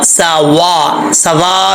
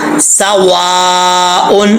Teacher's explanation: نہیں پڑھنا، سواء، یہاں پہ الف کے اوپر مد متصل ہے، مد متصل کا مطلب یعنی 2.5 سے 3 الف کی مقدار اس کو لمبا کرنا ہے